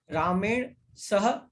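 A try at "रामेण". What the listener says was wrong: Is ana halanta? Is it ramen? It's not halanta.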